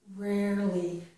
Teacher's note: So we're going right from the R to the L. We do not here add the schwa. In girl we can, okay, but not here.